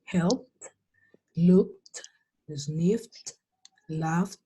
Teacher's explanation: Estas dos, la E y la D, van a sonar como una T.